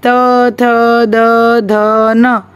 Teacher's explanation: त थ द ध न के व्यंजनों का उच्चारण स्थान ऊपर के दांतों से होता है, इसलिए दंतव्य व्यंजन कहते हैं।